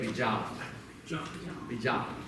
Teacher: There are people from Bailas who say bijab, bijab, with a glottal stop at the end. But if you don't pronounce that glottal stop at the end of it, that's perfectly fine too.